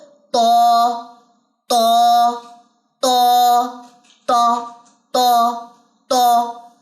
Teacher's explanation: त को अदा करते हुए आपकी अक्सा लिसान जो है वो पीछे से उठेगी भरा जाएगा आपका पूरा मुंह जो हवा मुंह के अंदर आपकी आवाज भरी रहेगी तो तो